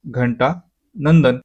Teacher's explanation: अनुस्वाराचा उच्चार स्पष्ट आणि थोडा लांबून होतो